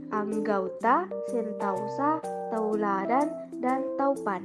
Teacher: Diptongisasi adalah proses perubahan vokal tunggal menjadi vokal rangkap secara berurutan. Perubahan vokal tunggal ke vokal rangkap ini masih diucapkan dalam satu puncak kenyaringan.